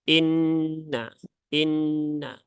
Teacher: Kemudian ada nun bertasydid lagi, maka di sini nunnya dibaca dengan ditahan 3 harokat ya, jangan tergesa-gesa.